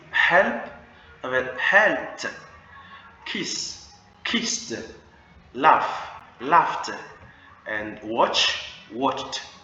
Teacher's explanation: Alors, les sons qui ne vibrent pas. When the verb ends in a voiceless sound, like p, k, s, ch. Those kind of sound, le ED se prononce T.